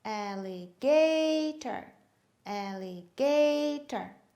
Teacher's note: stressed yes the third one we have four syllables ali gator the third syllable is stressed